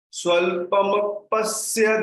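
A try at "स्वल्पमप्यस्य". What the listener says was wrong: Yeah, so remember this mapyasya. You keep mapyasya. Mapyasya. The pa is only half. Swalpa mapyasya. Swalpa mapyasya.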